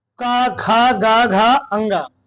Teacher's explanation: ये जो अक्षर होते हैं इसको हम लोग कहां बोलते हैं, कंठ से, यानी गले से।